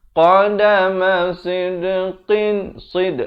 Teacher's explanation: Ada bunyi pantulan di situ, khalkhalah.